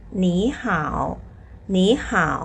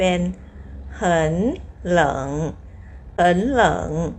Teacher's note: ต้องเปลี่ยนตัวแรกเป็นเสียง2นะคะ